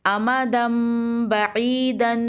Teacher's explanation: جب نون ساکن یا تنوین کے بعد با آ جائے تو نون ساکن یا تنوین کی آواز کو میم سے بدل دیتے ہیں اور میم میں غنہ کرتے ہیں